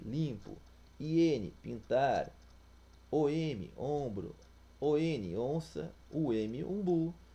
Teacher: As vogais são sucedidas das consoantes M ou N, representando fonemas vocálicos nasalizados, isto é, em um único fonema com som de vogal.